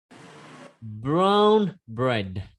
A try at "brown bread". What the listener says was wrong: Ok, chưa có âm n hơi ở mũi rằng.